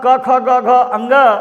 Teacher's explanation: क ख ग अंग यह कंठ से बोले जाते हैं